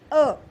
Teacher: अ वर्ण के उच्चारण में जिह्वा का जो मध्य भाग होता है वो सक्रिय होगा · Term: मध्य स्वर